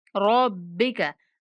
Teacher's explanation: रा को मोटा, बा को सख्ती के साथ और काफ को बिना खींचे पढ़ेंगे।